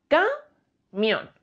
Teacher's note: Es una palabra que tiene este golpe de voz, esta sílaba tónica en la última de las sílabas, es una palabra aguda, termina en N, por lo que habría que acentuarla.